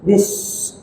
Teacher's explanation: Hendaklah orang membaca huruf sin itu dengan sifatnya, yaitu namanya safir. Safir itu haddatus saut, tajamnya suara. Jadi bacanya dengan berdesis